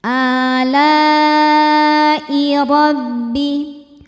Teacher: ro dibaca secara tafkhim karena berharokat di atas yaitu harokat fathah. Cara bacanya ditebalkan.